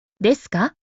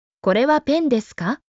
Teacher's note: It has a rising intonation.